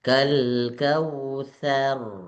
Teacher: Tsya maftuhah. Tsya tetap fathah dulu baru rnya yang tebal. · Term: ro-nya yang tebal